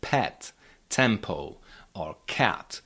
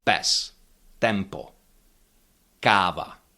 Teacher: There's no aspiration in those consonants.